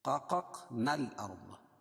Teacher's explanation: قاف پر جزم ہے اس لیے یہاں پہ قلقلہ ہوگا. قققنا الارض، یہ الف نہیں پڑھی جائے گی وصل کی صورت میں.